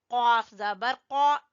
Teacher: یہ موٹا قاف ہے، زبان کی جڑ سے ادا ہوگا